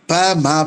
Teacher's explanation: உதாரணத்துக்கு சொல்லணும்னா ப மீ கீழ் இதழு ப ம பிறக்கும். மேலேயும் கீழேயும் உதடு ஒன்னு மேல ஒட்டுனாதான் பாவும் மாவும் பிறக்கும்